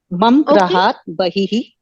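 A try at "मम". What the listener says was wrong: Mama. It's not mum. It is mama.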